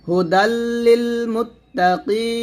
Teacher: সাকিন করে ফেলবো। কিতে 3 আলিফ টান দিয়ে নুনটা সাকিন করতে হবে, এটাকে বলা হবে মধ্যে আরজি।